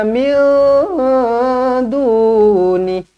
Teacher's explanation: Kalau kita cakap min, dah jadi izhar dah. Sedangkan ni ikhfa.